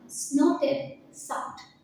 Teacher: We see that there are two onomatopoeic words, snorted and sucked. These onomatopoeic words have very harsh sounds. This harsh sound is conveyed by the dominance of the sibilant sound